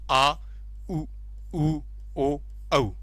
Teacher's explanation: पश्च स्वर में स्वरों के उच्चारण में जीवा का पिछला भाग सक्रिय रहता है